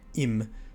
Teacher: If the word is too short, so like im, you don't have the space in the word to actually pronounce that y sound. It'd be yum, and there'd be no kind of open sound in it, and it wouldn't make any sense.